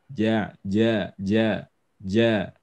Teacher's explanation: Tadi jim dan dalnya masih terasa, ya. Jadi harus dikurangi hamsnya, dihilangkan, ya. Artinya kita tidak melafalkannya dengan nafas